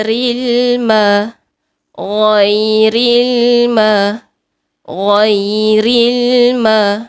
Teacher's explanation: huruf lam sifat dia tengah-tengah tak mengalir sangat tak menahan sangat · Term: lam mati